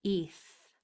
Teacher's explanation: e always says e so there's is your word is eth my tongue is going between my teeth at that last sound and blowing eth good feel free to put it in the chat if